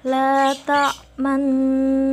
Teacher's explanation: Ismam artinya mencucu ya atau monyong, yang mana mengkombinasikan harokat fathah dengan harokat dhammah disertai dengan membacanya itu dimonyongkan bibirnya.